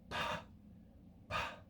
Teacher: that P with a breath at the end